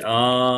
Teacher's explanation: మాత్రలు కొంచెం మనం పలికే సమయాన్ని ఎక్కువ తీసుకుంటే అది కాస్త దీర్ఘం అయిపోతుంది ఇంకా దీర్ఘం ఆ అని మూడు తీసుకుంటే అయిపోతుంది త్రిమాత్రాకారం ప్లుతం